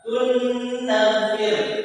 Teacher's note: nun mati dan tanwin dimasukkan ke huruf yang kedua yang disertai dengung atau brengenge.